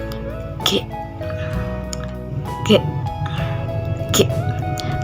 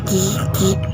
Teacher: Pangkal lidah menempel langit-langit lunak tapi pita suara bergetar, G. Contoh katanya gigi. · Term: huruf G